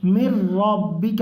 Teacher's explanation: میم کو ڈائریکٹ را میں ملائیں گے، مر ربک، را کو پر پڑھیں گے۔